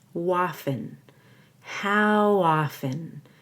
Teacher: you want to link the W to often so you say Waffen